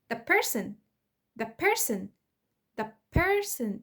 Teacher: صوت الت اختفى خالص او اتغير مكان خروجه بقى bilabial